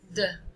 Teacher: Letter D sound is an alveolar sound, and it is voiced, and it's also a plosive sound